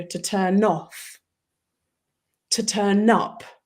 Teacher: So if you have the verb to turn off, unless you want to emphasize something, and sometimes we do want to emphasize something, you actually roll the N into the next word